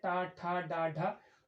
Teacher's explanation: तो ये हमारे दांत के ऊपर जो मूर्धन्य भाग है उससे टकराती है जिह्वा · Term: मूर्धन्य वर्ण